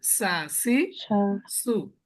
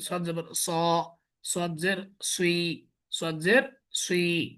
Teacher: মোটা যেহেতু এটা অ সাউন্ড আসবে, ঠোঁট গোলা গোল থাকবে। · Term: মোটা হরফ